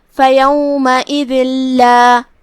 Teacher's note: ہم یہ تنوین کو لام میں داخل کر کے بغیر غنہ کے لیکن تشدید کے ساتھ یہ حکم کو ادا کریں گے